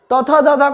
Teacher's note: त थ द ध को तवर्ग कहते हैं जिनका उच्चारण दंत से होता है